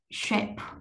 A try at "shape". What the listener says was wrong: Shape, shape, âm bờ tận cùng á, bật ra mạnh quá thì nó nghe nó hơi dị, tại vì đọc có một từ rồi cho nên mình bật mạnh vậy, nhưng mà khi mà vào trong một cái câu hay cái cụm thì mình sẽ nhẹ lại, giảm